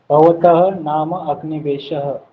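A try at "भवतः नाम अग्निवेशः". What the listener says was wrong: Samyak.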